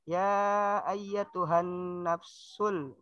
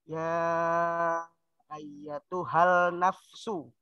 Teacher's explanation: alif lamnya tidak usah dibaca, langsung dimasukkan ke huruf nun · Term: alif lam syamsiah